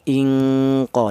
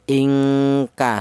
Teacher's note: Dengungnya lebih dominan daripada samarnya. itu untuk ifa adna.